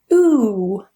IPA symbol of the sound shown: uː